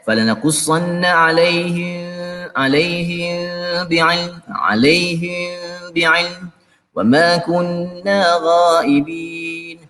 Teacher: Mim mati berjumpa dengan huruf ba, ikhfa, ikhfa syafa, ikhfa syafawi. Falanaku, ada dengung sikit falanaqussanna alaihim bi'ilm wa ma kunna ghaibin.